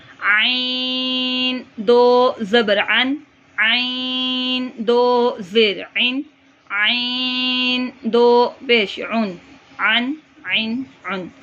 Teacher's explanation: عین حلق کے درمیان سے جہاں سے ہا نکلے گا وہیں سے عین نکلے گا اور اس کو 3 الف کے برابر لمبا کرنا ہے.